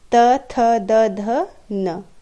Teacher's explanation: त वर्ग का उच्चारण करते समय हमारे जिह्वा दांत का स्पर्श करती है, इसलिए इसे दंत्य कहते हैं।